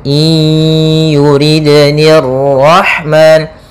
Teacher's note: Maka cara membacanya i ya, langsung masuk ke ya sambil dimasukkan ke rongga hidung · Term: idgham naqis